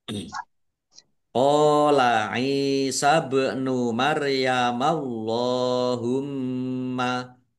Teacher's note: ba sukun bacaan qalqalah dipantulkan ditampakkan pantulannya nya Maryamallahumma Allahnya dibaca tebal karena harakat di depannya fathah.